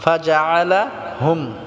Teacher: এই হুমটা আবার টান হবে না, এটা ইজহার হবে, ইজহারে শফবি।